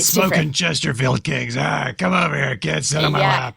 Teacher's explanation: harsh voice um which is something that happens if you have to like really Force the air through your vocal folds more often